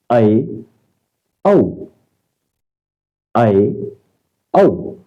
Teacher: करें विवृत में मुख जो है वो पूरा खुलता है तो अर्ध विवत यानी विवृत से कम और अर्ध समृत से जो है वह अधिक खुलेगा